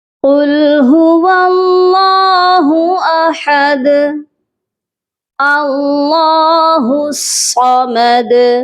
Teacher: جب ہم نے ان آیات پر وقف کیا تو دال جو ہے ساکن ہو گئی اور دونوں دال پر ہم نے قلقلہ کر کے وقف کیا